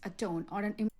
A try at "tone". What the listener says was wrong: Yeah, I think I'm hearing it unaspirated. I might be wrong. Tone. I think it is unaspirated, but regardless, make sure you aspirate that stop. We got t. You know, like not breathe out, but kind of make sure there's a puff of air coming out.